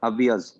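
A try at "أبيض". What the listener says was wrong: حرکت نہیں بولتے سر آپ کو پتا حرکت نہیں ہوگی تو برکت نہیں ہوگی.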